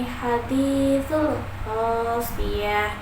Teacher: Di akhir kalimat itu ada huruf ta marbutah. Cara membacanya yaitu bila waqaf, maka huruf ta-nya berubah menjadi huruf ha yang diwakafkan.